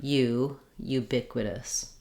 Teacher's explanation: this word has stress on the bic syllable and the letter u says two sounds in this word so